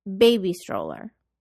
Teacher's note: We say compound nouns with the musical pattern of up down.